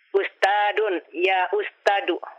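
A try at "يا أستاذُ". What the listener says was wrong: Ustadu. Zal. Bukan dal ini. Zal. Ya Ustadu.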